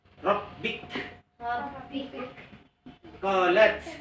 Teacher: Ka dengan ta itu mahmus. Huruf yang harus di akhirnya dihembuskan suara.